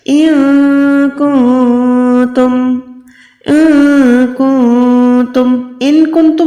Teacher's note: ان کنتم نہیں ہے، یہاں پر نون ساکن کے بعد کاف ہے، دوسرے نون ساکن کے بعد تا ہے، یہ دونوں تا اور کاف حروف اقفا میں سے ہیں، یعنی ان دونوں نون کو آپ نے ناک میں چھپا کے ادا کرنا ہے۔